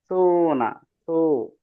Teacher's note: আমাদের জিহ্বার আগা সামনের ঠিক দুই দাঁতের আগার সঙ্গে লাগবে।